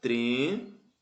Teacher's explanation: a antepenúltima sílaba é mais forte. Se a antepenúltima sílaba é a mais forte, no caso de trêmula, ela é uma proparoxítona.